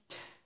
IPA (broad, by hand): t